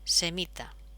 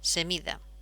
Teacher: esta T, que es sorda, sonoriza